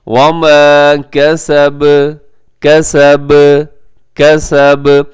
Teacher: کسب، بہت زیادہ سختی کے ساتھ آپ نے یہاں پر وقف نہیں کرنا، جیسے اوپر جو وتب وہاں پہ ہوا تھا تو یہاں پہ جزم پہ ہو رہا ہے، سکون پہ وقف ہو رہا ہے، تو آپ نے کیا کرنا ہے کہ اس کو ذرا قلقلہ نرمی کے ساتھ کرنا ہے۔